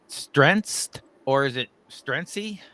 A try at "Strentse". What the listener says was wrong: Just strengths. Yeah, I guess the E's just silent.